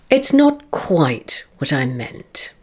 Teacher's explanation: The emphasis is on quite here, meaning that you've been slightly misunderstood.